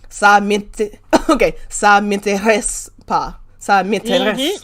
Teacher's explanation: the R in French, when it's pronounced, it always comes from the throat. It's guttural. It comes from that same place when you gargle.